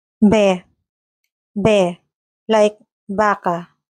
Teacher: the letter V is usually pronounced very similarly or even the same as B, producing a soft sound made by pressing the lips together. Unlike English, there is no strong V sound made with the teeth and lower lip.